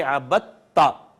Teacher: دال کا تا میں ادغام ہو گیا. ایسے ادغام کو جو دو ہم مخرج حروف پہ ہوگا اس کو ادغام متجانسین کہیں گے.